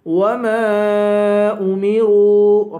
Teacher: وما میم کو ایک الف کے برابر کھینچ کر پڑھیں گے، اور میم کے بعد الف ہے، الف پر مد ہے، اس مد کو 3 الف کے برابر کھینچیں گے۔ وما امروا، را کے بعد واو ہے، واو حروف مدہ ہے اور واو پر مد ہے، اس مد کو بھی 3 الف کے برابر کھینچیں گے